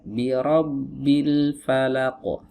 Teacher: Ro di sini dibaca tebal wajib ya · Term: ro mufakhamah